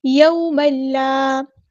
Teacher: کریں گے، یوم لا، یہاں پر واؤ سے پہلے زبر ہے، واؤ ساکن سے پہلے جب زبر ہوتی ہے تو مد لین ہوتی ہے، نرمی سے موڑیں گے